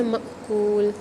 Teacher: آپ میم اور حمزہ ساکنہ کو ملا کر پڑھتے ہیں، جھٹکا دے کر پڑھتے ہیں، ہلکا سا جھٹکا دے کر پڑھتے ہیں